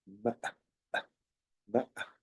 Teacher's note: se cierra la glotis al decir na, na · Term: sonidos glotales, los sonidos glotales